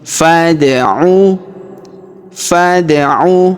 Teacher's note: Huruf da berharokat sukun kita pantulkan atau kita qalqalahkan ya.